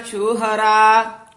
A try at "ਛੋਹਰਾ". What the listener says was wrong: ਹਾਂ, ਸ਼ੋਹਰਾ ਸ਼ਿਸ਼ਾ ਨਹੀਂ ਬੋਲਣਾ, ਛੱਛਾ ਬੋਲਣਾ ਹੈ, ਛੋਹਰਾ।